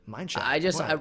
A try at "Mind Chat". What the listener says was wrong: You need to pronounce it like mine chat. have a little bit more of a pause, because when you let it roll off the tongue, it just sounds like he pooped himself.